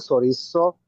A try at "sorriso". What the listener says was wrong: সরিষো না, এই যে আপনি উচ্চারণ হচ্ছে, সরিজো, ঠিক আছে। কেন এখানে এস এর উচ্চারণ জ্বর মতো কেন হবে?